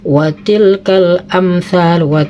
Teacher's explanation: jadi gak boleh didengungkan, harus jelas. Idhar artinya jelas, safawi di bibir, jadi idhar safawi itu artinya jelas di bibir.